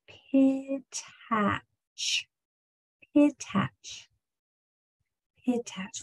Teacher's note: we have a voiceless sound. P is only air, it's just a puff of air. E with that smile and your teeth very narrow.